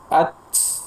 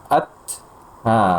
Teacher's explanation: ada sedikit hembusan nafas setelahnya, supaya terhindar dari kesalahan jatuh pada huruf ha, tambahan huruf ha dan huruf sin. Seakan-akan mengucapkan at tambah ya ha atau sin.